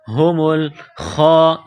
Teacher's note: خا کو موٹا کرنا ہے 1 الف کے لمٹ میں کھینچنا ہے.